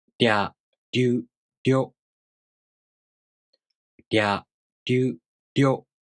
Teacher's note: try to add the [j] sound, a very short one, between the [ɾʲ] sound and a vowel.